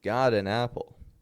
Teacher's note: the flap T can connect words together